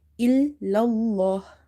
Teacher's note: before the letter lam in the word Allah, you have fatha, so you will make it heavy. Illallah. Hamza, lam kasra.